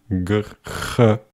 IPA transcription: γ